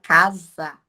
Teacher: Quando a gente fala a palavra casa, nós escutamos o som do C, do A, do S, que tem som de Z na hora, casa. Parece como se casa fosse escrito com Z, mas é com S.